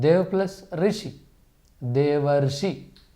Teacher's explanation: बनने में दूसरा रूप है गुण संधि का इसका उदाहरण है अ प्लस ऋ तो दोनों मिलकर अर बन जाते हैं